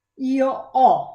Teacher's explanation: Io ho, the verb to have, where we don't pronounce the H and we pronounce the O as an open O.